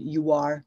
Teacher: you can see an insertion of the W sound